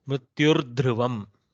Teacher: Soft dakara is Mahaprana. Soft in the sense it is a soft consonant, though it is Mahaprana. It belongs to the Ghosha.